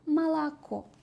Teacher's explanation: Urg'u tushmagan o harfi a ga o'zgaradi rus tilida.